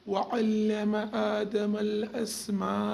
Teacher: کھڑا زبر کو ایک الف کے برابر کھینچیں گے